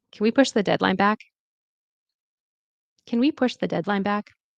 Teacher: And the rising tone is seeking agreement. Okay, so it's going to rise.